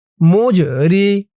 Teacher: জিমটা কলকলার হরফ ধাক্কা দিয়ে পড়তে হবে